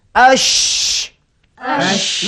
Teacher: kita dapati bertaburan udara bertaburan angin daripada mulut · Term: tafasi